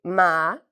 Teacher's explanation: we use our nose when we pronounce the M sound so MA okay and you can actually feel your nose vibrate